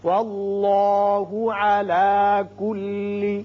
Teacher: اس میں اللہ کا لام پر ہوگا اس لیے کہ پہلے حرف پر زبر ہے